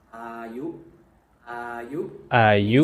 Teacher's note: So the first อา sound ยุ is a slightly longer sound. อา And the ยุ second part ยุ is short.